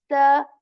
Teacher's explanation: At the back of them you put the tip of your tongue and say this sa with this whistle sound, and also air comes out of your mouth as well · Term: sa sound